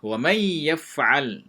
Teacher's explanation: nun mati bertemu dengan ya, juga idgham, tapi dia dengan gunnah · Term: idgham bi gunnah